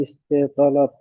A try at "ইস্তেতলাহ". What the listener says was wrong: আর শেষেরটা হলো ইস্তেতলাহ, হ হবে শেষে। দেওয়া আছে, এটা আসলে গোলতা হবে, ইস্তেতলাহ।